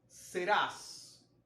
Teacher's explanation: serás es una palabra aguda porque la última sílaba es la sílaba tónica termina en ese por lo tanto debe llevar acento ortográfico el